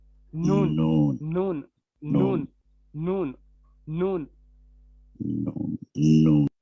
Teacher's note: लाम की जगह से एक दाढ़ कम होकर जब ऊपर वाले 3 दांतों के मसूड़ों से लगे तो उससे नून अदा होता है